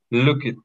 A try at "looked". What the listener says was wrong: Ahí ya me cambiaste otra vez el sonido. Me cambiaste el sonido. Me estás diciendo Ed. Looked. Acuérdate que suena como t.